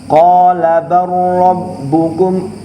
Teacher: Mutajanisain, karena makhrajnya sama tapi beda sifat, sehingga cara bacanya qala rabbukum, lamnya lebur, jadinya kayak roknya itu langsung tasydid